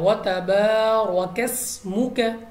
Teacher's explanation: سین باریک آواز کے ساتھ، سیٹی والی آواز کے ساتھ ہم نے پڑھنا ہے